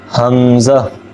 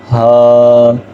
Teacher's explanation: یہ دونوں حروف حلق کے نیچے والے حصے سے ادا ہوتے ہیں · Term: حروف حلقی